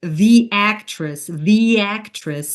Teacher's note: So we insert a y sound between the and actress. Why? When a word ends in the E sound and the next begins with a vowel with actress, like actress, we insert a y sound to make it sound more fluid.